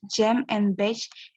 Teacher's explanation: Air is blocked with tongue just beyond the alveolar ridge, post-alveolar, then released as a fricative.